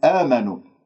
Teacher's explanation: ألف ساكن قبل همزة مفتوحة، مد بدل مقدار حركتين